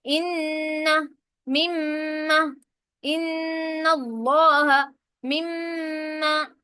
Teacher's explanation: ناک کے اندر میں آواز لے کر جا رہی ہوں صرف ایک الف کے برابر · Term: غنہ